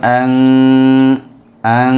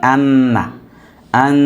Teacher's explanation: ইখফা। গুণনা করতে হবে নাকের ভিতরে নিয়ে এক আলিফ, নুন সাকিনের উচ্চারণকে